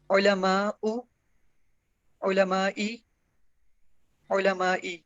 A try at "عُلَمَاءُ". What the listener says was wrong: غیر منصرف میں دو زبر لگتی ہیں، زیر نہیں ہوتی. علماء علماء علماء.